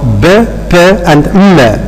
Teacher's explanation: all of them are being produced by involving the two lips. So they are bilabial.